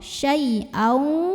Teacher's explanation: tanwin fathah ketemu sama huruf waw, maka tanwin fathahnya masuk ke waw, syai'au, dan tahan, dengungkan. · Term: idgham bil gunnah